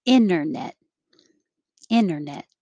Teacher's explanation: you will hear it with the t internet or without the t